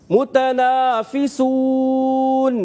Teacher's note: جہاں پر سین کی ادائیگی ہے اس کو باریک سیٹی کے ساتھ